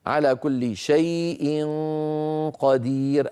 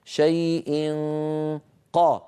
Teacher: لنرى مثال اخفاء النون عند القاف على كل شيء قدير ايضا ننتقل من مخرج الياء الى مخرج القاف شيء من غير الضغط شيء ق لما اقول ق هنا اضغط